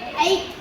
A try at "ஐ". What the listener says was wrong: ஐ எப்படி வாசிக்கணும்? ஐ குடிலா நெடிலா? நெடில். அப்போ எப்படி வாசிக்கணும்? ஐ நெடில் இப்படி தான் வாசிக்கணுமா?